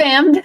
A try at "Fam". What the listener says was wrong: The D is silent.